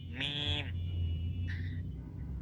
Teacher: মিম পড়ার সময় উপরের ঠোট এবং নিচের ঠোটের শুকনা অংশ শুকনা অংশ একসাথে লাগবে